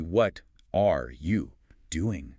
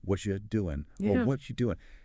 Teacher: See how the T, one blends with the R or you, often becomes ya. It flows together. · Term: linking